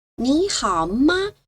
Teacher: Yeah, the neutral tone is light, fast. It sounds toneless.